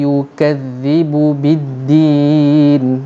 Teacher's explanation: hujung lidah dikeluarkan antara dua gigi kapak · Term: bunyi Zal